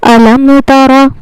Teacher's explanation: اس میں ہمیں جو خیال رکھنا ہے وہ ہے اس کا پہلا ورڈ، یہاں پر ہمیں غنہ نہیں کرنا، یہاں پر ہوگا میم ساکن کا اظہار، یعنی میم کو ظاہر کر کے بغیر غنہ کے جلدی پڑھنا ہے